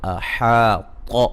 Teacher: احاط حا الف مدہ ہے، طا کو موٹا ادا کریں گے